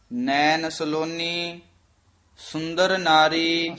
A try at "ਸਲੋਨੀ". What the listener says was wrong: ਸਲੋਨੀ ਵੀ ਥੋੜਾ ਜਿਹਾ ਕਸ ਕੇ ਬੋਲਣਾ ਹੈ। ਨੈਣ ਸਲੋਨੀ ਸੁੰਦਰ ਨਾਰੀ।